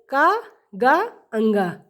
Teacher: जिनके उच्चारण में श्वास पूर्व से अल्प मात्रा में निकले और जिनमें ह का जैसी ध्वन नहीं होती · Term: अल्पप्राण व्यंजन